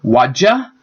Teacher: The dy is a little hard to say, so it changes either to the j or cha, depending on the region of usage